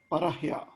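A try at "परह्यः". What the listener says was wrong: It should be visarga ending.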